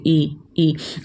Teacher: इसको बोलने में हमारा मुंह बिल्कुल भी नहीं खुलता। जैसे आप बोलिए ई, आपने होठों को बिना हिलाए, बिना कोई एक्स्ट्रा एफर्ट डाले आपने इनको बोल दिया। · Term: संवृत